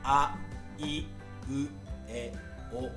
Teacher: イとウが一番閉じるんですけど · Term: 母音のイ